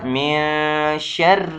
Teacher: من نون ظاہر نہ کیا جائے بلکہ نون کو اخفاء کرنا ہوتا ہے، یعنی نون کو چھپا کر پڑھنا پڑتا ہے، تو پڑھا جائے گا من شر، اور را بھی جس پر را پر زیر آ گیا ہے تو اس وجہ سے را باریک پڑھا جائے گا۔